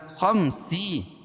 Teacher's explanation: خا کو موٹا پڑھیں گے کیونکہ حروف مستعلیہ میں سے ہے